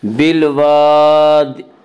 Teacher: جاب الصخر بالواد, بالواد, الف مدہ, الف ہمیشہ مدہ ہوتا ہے, الف سے پہلے ہمیشہ زبر ہوتا ہے, الف مدہ کو ایک الف کے برابر کھینچ کر پڑھیں گے. بالواد, آگے آیت ہے, وقف کریں گے.